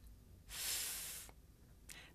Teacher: I make the sound by sticking my tongue up just a little bit and blowing air between my tongue and my top teeth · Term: voiceless consonant